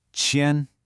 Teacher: It's a high, flat tone.